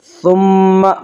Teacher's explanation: ثم میم مشدد ہے، غنہ ہوگا، غنہ کی مقدار 1 الف ہے۔